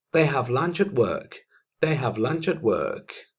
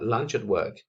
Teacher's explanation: Si os fijáis, lunch se conecta con at